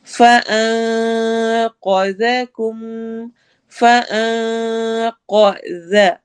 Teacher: قا heavy ہوگا، ذا باریک ہوگا اور ساتھ ہی نرمی سے پڑھا جائے گا